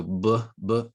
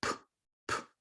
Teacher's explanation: With a voice sound, you're usually going to feel basically some vibration in your throat. Okay, so b, b, you can actually feel the movement, whereas p, p, it's more airy